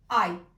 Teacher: E nesse caso temos o ditongo ai. Ditongo constituído por uma vogal breve e a semivogal iota.